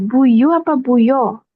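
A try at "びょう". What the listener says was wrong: Bio, bio. Bio. Bio. Langsung dia satu pengucapan bio.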